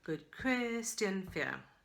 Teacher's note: We don't want that sh sound in the middle.